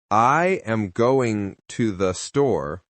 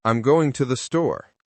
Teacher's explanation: The strong words are going and store. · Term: Sentence stress